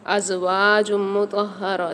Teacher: زا کی آواز واضح ہونی چاہیے، زا کو سیٹی اور سختی کے ساتھ پڑھتے ہیں